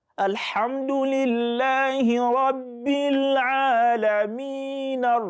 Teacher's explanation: So depending on your pace. But when you are joining it with the next verse, then the rule of the natural Maddu will now come to play. That is just 2.